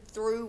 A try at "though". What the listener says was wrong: Not through, it's an O sound. The O.